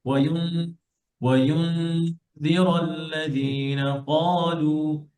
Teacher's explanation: আপনি নুনকে স্পষ্ট করবেন না, ক্লিয়ার করবেন না, নুনের সাউন্ড উচ্চারণ করবেন না, হ্যাঁ, এন্ড সাউন্ড বলবেন না। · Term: নুনকে নাকে লুকান